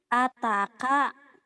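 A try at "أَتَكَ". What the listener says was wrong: Tapi kan ini panjang nih. Ataka.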